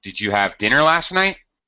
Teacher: When we make questions with did in the past simple, they are yes or no questions. Okay, so they have rising intonation at the end of the question